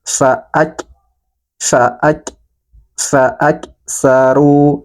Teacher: huruf Kaf dalam keadaan sukun maka nafasnya dialirkan dan juga suaranya tertahan